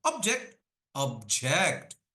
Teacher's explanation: I'm putting more pressure on the second syllable